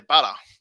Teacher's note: we tend to just go ah when it's got er at the end · We don't even pronounce the T as very hard. It's closer to a D.